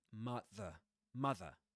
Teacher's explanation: Then mother ends with a schwa.